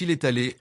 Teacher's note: se prononce il est allé en un seul bloc sonore continu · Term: enchaînement consonantique